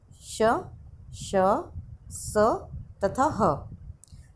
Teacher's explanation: ऊष्म व्यंजन वो व्यंजन है जिनको बोलते समय मुंह से रगड़ खाकर गर्म हवा निकलती है, गर्मी पैदा होती है मुंह में और गरम गरम हवा निकलती है, तो उसे ऊष्म व्यंजन कहते हैं।